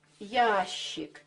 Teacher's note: как она у нас сейчас есть буква щ произносится очень по-разному литературная норма требует чтобы мы произносили долгий и мягкий шипящий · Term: долгий мягкий шипящий